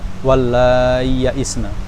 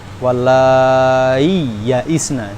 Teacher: Jadi ya sukunnya itu harus diizharkan, enggak bisa diidgamkan.